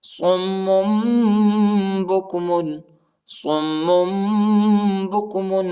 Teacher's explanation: یہ صم نہیں پڑھا جاتا، ٹھیک ہے۔ آخر میں جو ہے نون کا آواز نہیں نکالنا ہے بلکہ میم کا آواز نکالنا ہے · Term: اخفا